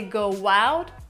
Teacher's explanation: we say go out with an extra W sound